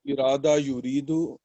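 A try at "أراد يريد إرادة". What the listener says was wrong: Arada, not irada. Arada yuridu irada. No. The first word is arada, not irada. Irada is the masdar. Arada. Arada yuridu irada.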